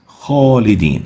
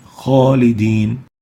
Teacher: Kha is one of the خص ضغط قذ, the elevation letter, and that's why it should be pronounced with tafkheem.